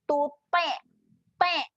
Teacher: huruf ta ni huruf tebal. Okey, jadi kita kena muncung dulu sebelum senyum. Okey, kita muncung dulu sebelum senyum.